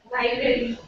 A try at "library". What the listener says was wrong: Library or library? The A syllable is not there. A sound is not there. It's library. Library. Library, not library. It's library.